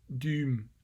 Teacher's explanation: So high front rounded tense vowel here in the middle, followed by an M, and so that gives you a transcription like that. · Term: high front rounded vowel